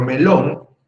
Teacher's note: es aguda. Porque la sílaba fuerte es lón, por algo lleva la tilde.